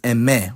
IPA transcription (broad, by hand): ɛˈmɛ